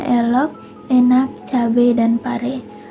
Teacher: fonem E, yaitu vokal sedang, depan tak bulat